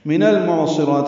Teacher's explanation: من المعصرات نون کو لام سے ملا رہے ہیں